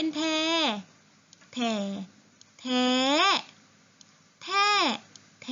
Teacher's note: รูปวรรณยุกต์เป็นโทแต่เสียงเป็นตรี